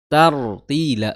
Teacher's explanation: di tartila juga sama ada ro sukun yang sebelumnya fathah. Jadi rnya itu tebal. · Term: ro tebal